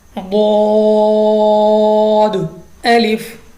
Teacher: اس کے بعد ہمارے پاس ہے مستعلیہ ہی ہے, منہ کو کھول کر پڑھیں گے, موٹا پڑھیں گے, پر پڑھیں گے